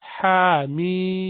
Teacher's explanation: You have to prolong it for 4 to 6 alif. Hamim. Ha has alif next to it. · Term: mad